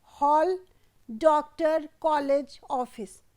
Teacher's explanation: इसे आ और ओ ध्वनियों के के मध्यवर्ती ध्वनि माना जाता है